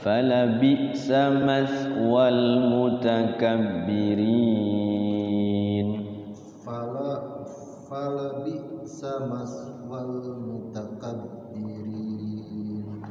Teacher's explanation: Walnya jangan ditahan, maswal langsung